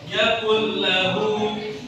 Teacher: nun mati atau nun sukun bertemu dengan huruf lam, yang mana lam itu sendiri adalah huruf idgham bila guna. Harus dibaca idgham bila guna, dimasukkan huruf yang pertama adalah huruf yang kedua, yakul lahu, seperti surat Ikhlas, walam yakul lahu kufuwan ahad.